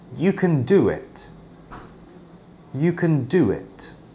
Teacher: Between the do and the it, there is a slight /w/ sound.